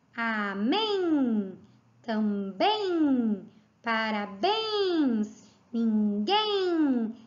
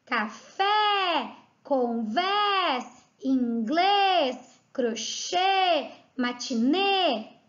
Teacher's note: palavras que têm a última sílaba tônica abaixo. Ó, amém, também, parabéns, ninguém. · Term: palavras oxítonas